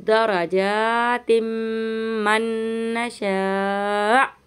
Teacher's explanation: यहाँ पे तिम हम गुन्ना करेंगे इदगाम का